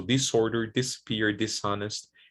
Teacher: when you have dis prefix it's also pronounced voicelessly